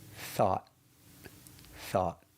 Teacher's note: we finish with a stop T. Stopping the air with our tongue up at the roof of our mouth